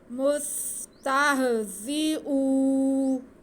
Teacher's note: واو ساکن سے پہلے حمزہ پہ پیش، واو مدہ، اسے ہم کھینچ کے پڑھیں گے